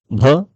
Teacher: होठों के आपस में टकराने से जो ध्वनि उत्पन्न होती है, उसे हम ओष्ठक ध्वनियां कहते हैं